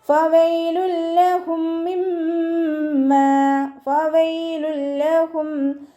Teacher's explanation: തെൻവീന് നമ്മൾ ലാമിലേക്ക് ലയിപ്പിച്ച് ഒന്ന കൊടുക്കാതെ മണിക്കാതെ ഓതി കൊടുക്കുക